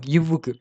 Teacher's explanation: அப்புட்ன்னா, நம்ம மேல உள்ள பல்லு இருக்குல்ல, இந்த கீழ் இதழ் போயி மேல உள்ள பல்லுல பொருந்தும்.